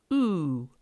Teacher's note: Then try saying oo and feel your tongue up towards the back of the mouth